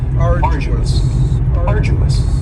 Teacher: you don't hear that D sound that much. It's not very strong. It almost sounds a little like a J.